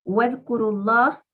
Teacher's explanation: Idkuru termina con sonido U, con dhamma. Entonces la palabra Allah hay que leerla con fuerza.